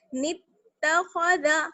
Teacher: خا کو موٹا باقی سب کو باریک